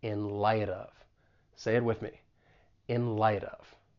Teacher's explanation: So the final T in light, because it comes between two vowel sounds with the American accent, I am going to pronounce it as a flap T. And then I can link that soft D with the vowel sound in of